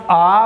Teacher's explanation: जिन स्वरों के उच्चारण में मुख पूरा खुलता हो वो क्या है, विवृत कहलाता है।